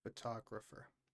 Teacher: the stress is on the ta, photographer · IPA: fəˈtɒɡrəfə